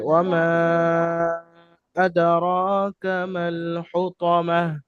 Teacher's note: জি তো যেহেতু হামজা আসল রূপে আসেনি, সেহেতু এটি মাদ্দে মুনফাসিল এবং এখানে সরু মাদ আছে, ঠিক আছে? হ্যাঁ, তো এখানে তিন আলিফ পরিমাণ টান দিয়ে পড়তে হবে।